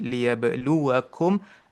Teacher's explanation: huruf ba tu ada qalqalah sikit